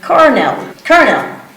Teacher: You don't pronounce it like L, you pronounce it like R. So it's colonel.